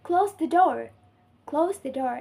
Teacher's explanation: the pitch of voice drops at the end of sentence, signaling that the thought is complete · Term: Falling intonation